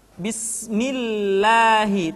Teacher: kalau lafaz Allah didahului oleh huruf yang berharakat kasrah maka lam kembali dibaca dengan tipis tarkik